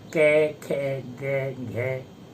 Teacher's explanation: अब जीभ के मूल भाग से जो उच्चरित होते हैं व्यंजन, विशेषकर कै खे गे घे, यानी कैवर्ग का 5वां अक्षर, तो एक कखाभ्याम जो है वो जीभ के मूल भाग से उच्चरित होता है। इसलिए कै खे को जिह्वा के मूल भाग से उच्चरित होने के कारण जिह्वा मूलीय कहते हैं।